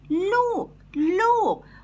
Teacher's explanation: lo is in falling tone